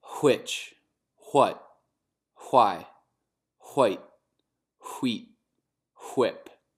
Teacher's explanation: Algo que acontece nesse sotaque é o som do... O R duplo do português, que acontece no sotaque dele antes de palavras em inglês que se escrevem com WH no começo